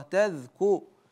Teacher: التاء والذال والكاف كلها مرققه